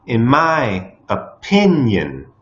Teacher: in the word opinion the second syllable is stressed